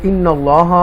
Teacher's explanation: अल्लाह के नाम को तफ़कीम के साथ पूर पढ़ेंगे, बोल्ड पढ़ेंगे, और यहाँ पर भी या मद्दा आ रहा है और एंड पर मुअतदीन करके हम इसको पढ़ेंगे।